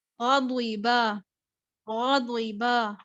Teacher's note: ضاد کو پر رکھنا ہے، با کو باریک کر دینا ہے، غین کو بھی پر رکھنا ہے